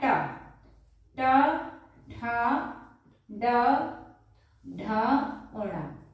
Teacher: ये मूर्धन्य वर्ण कहे जाते हैं, अर्थात इनका उच्चारण मूर्धा से किया जाता है